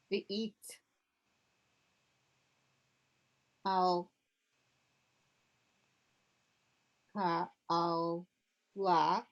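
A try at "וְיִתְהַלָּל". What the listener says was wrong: It's not al. It's ah and then this. Say it again.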